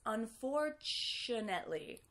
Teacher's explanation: do you hear how that T becomes a ch?